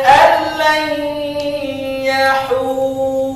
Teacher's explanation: Dinamakan di sini idgham bila gunnah. Idgham maknanya memasukkan lam dan memasukkan an ke lam tanpa dengung